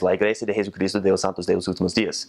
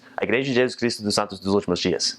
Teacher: Spanish is a lot more enunciated and a lot more choppy, and Portuguese is a lot more slurred · there's a lot more jus and chus, and it's just a lot more slurred in Portuguese